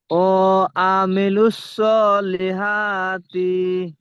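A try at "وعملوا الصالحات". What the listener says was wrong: তি টান হবে না, এখানে তি টান দিচ্ছেন, একটু খেয়াল করে পড়লে আর টান হবে না। ওয়াও টান দিচ্ছেন, ওয়ামিলুস সলিহাতি। ওয়ামিলুস সলিহাতি।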